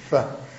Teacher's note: kuna fa inatoka sehemu ya lower lip, sehemu ya mdomo ya chini kabisa